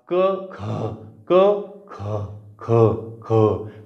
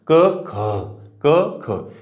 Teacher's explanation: हा महाप्राण जो ह आहे तो उच्चारामध्ये यांच्यामध्ये मिसळायला सुरुवात झाली बघा कसं क मध्ये मिसळून हा तयार झाला